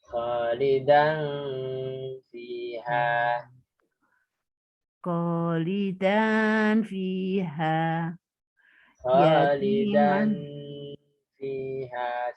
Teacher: Dannya muncul tanwinnya tapi samar